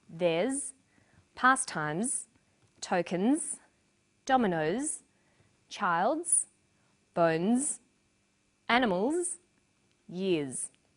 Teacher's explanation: after vowels and diphthongs, the final S is pronounced z.